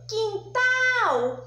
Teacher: a sílaba mais forte foi a sílaba tal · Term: oxítona